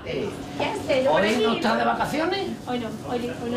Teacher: Lo que diferencia a Andalucía del resto de la península es una cosa de la que casi nadie se da cuenta, no es el seseo ni el ceseo, sino el modo de pronunciar la S. El modo de pronunciar la S, que en Andalucía se pronuncia más con los dientes y más arriba, más hacia atrás.